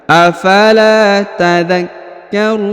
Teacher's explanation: Afala takarun ya huruf Kaf ditahan dan ditekan ya afalaar kemudian huruf ru dipanjangkan boleh dua Boh empat boleh enam ya karena di depannya terdapat wau sukun sebelum huruf pemberhentian dan huruf pemberhentiannya huruf Na disukunkan atau dimatikan